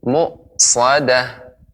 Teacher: hamzah tetap harus diucapkan dengan tenggorokan bagian bawah, mu, ya, tidak ada sedikit pun pantulan mu'sadah atau menjadi ain mu'sadah, demikian.